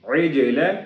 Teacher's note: جیم کے اوپر ساکن ہے، جس کی وجہ سے ہم اس کے اوپر قلقلہ کریں گے، اس کو ہلا کے پڑھیں گے